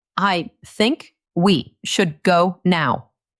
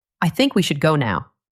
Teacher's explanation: The voice goes up on think.